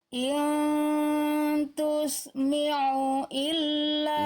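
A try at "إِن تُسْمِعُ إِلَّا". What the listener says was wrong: Kalau tadi ainnya dia enggak nekan tengah tenggorokan Bunda. Tapi jadi hamzah tapi disengaukan ya.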